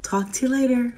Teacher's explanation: The R in later is fully pronounced with that curled tongue tip and bunched back in the mouth.